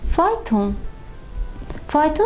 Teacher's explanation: A qalın sait, o qalın sait. Bu zaman deyirik ki, hər ikisi qalındır. Burda qalın saitlərin bir-birini izləməsi baş verir.